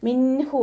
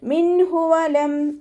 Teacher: നൂൻ സാക്കിനയെ വ്യക്തമാക്കി മണിക്കാതെ ഓതുക. മിൻഹു എന്ന് മണിച്ചിട്ട് ഓതരുത്.